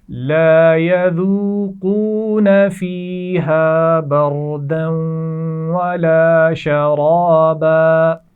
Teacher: بردن، را کو موٹا پڑھنا ہے اور دال کو جب واو سے ملائیں گے تو یہاں غنہ بھی کیا جائے گا. ولا شرابا، یہاں پر را موٹا پڑھا جائے گا